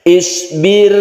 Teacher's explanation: ingat roknya tipis, caranya yaitu bibir kita dikebawahkan.